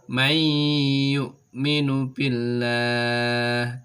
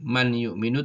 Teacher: nun sukun atau tanwin nya dibaca lebur kemudian disertai dengan suara mendengung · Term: Idgham Bighunnah